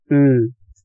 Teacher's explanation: 'ㅣ' 상태에서 혀가 뒤쪽으로 가면 'ㅡ'가 되죠